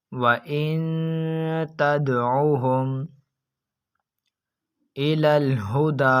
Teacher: تو اس جگہ پر حرف دال جو کہ حروف قلقلہ میں سے موجود ہے اور یہ حرف دال ساکن بھی ہے، تو اس وجہ سے ہم اس حرف دال کے اندر خوب قلقلہ ظاہر کر کر پڑھیں گے